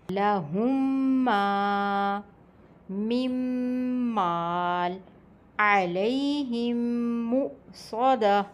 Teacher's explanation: تو پہلے میم کو دوسرے میم کے ساتھ ملا کر غنہ یعنی کہ ناک میں آواز لے جا کر پڑھا جائے گا۔ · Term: ادغام شفوی